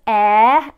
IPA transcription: eə